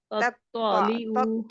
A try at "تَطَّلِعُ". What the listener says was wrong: حروف نطعیہ کے دونوں ہی حروف موجود ہیں. تطلع او تطلع او نہیں کرنا. او کریں گے تو واو جزم والی آٹومیٹکلی ایڈ ہو جاتی ہے. سا کھینچا نہیں کہ مد لیٹر بن گیا. اور یہ بھی ہماری گناہ کے درجے والی غلطی ہے.